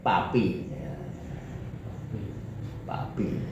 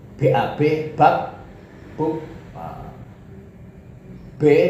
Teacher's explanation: Itu bedanya itu antara P dengan ba itu hanya bergetar atau tidak.